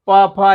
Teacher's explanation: प फ ऐसे बोल रहे हैं तो होठ आपस में एक दूसरे को छू रहे हैं